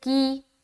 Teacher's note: یہاں پر آ جائیں، کی کاف کے نیچے زیر کی حرکت ہے، زیر کو جلدی پڑھیں تھوڑا بھی نہ کھینچیں، معروف پڑھیں مجہول آواز سے بچے